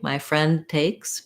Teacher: So I'm going to stop the N very short, put my tongue in the D spot to mark that D. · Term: stop that d, stop D